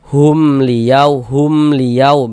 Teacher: Maka semuanya namanya izhar syafawi hukumnya. Karena dia izhar maka dibaca jelas, tidak berdengung.